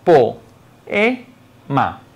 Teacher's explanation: la vocal abierta O y la vocal abierta E funcionan como dos sílabas distintas. Por lo tanto, la pronunciación es la siguiente: po-e-ma. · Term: hiato simple